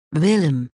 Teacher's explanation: Langue en avant et pas de projection buccale comme dans w. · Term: v du néerlandais